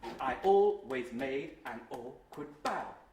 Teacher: Note the almost perfect iambic rhythm.